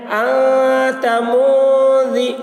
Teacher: انت، میم نون پیش من، انت من، ذال زیر دی، انت منذی، نون ساکن کے بعد حروف اخفا میں سے ذال آ رہا ہے، اس لیے نون کی آواز کو ناک میں چھپا کر پڑھیں گے، اس کو اخفا کہتے ہیں۔